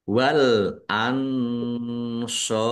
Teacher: Wal ansobu alif lam komariah juga ditandai lamnya dibaca sukun. Nun sukun bertemu dengan huruf shot bacaan ikhfa dibaca samar-samar.